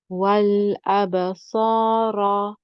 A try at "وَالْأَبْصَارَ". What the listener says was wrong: So the sad can have more itbaq. The ra is okay now as it is.